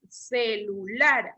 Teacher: Lleva el acento en la última sílaba.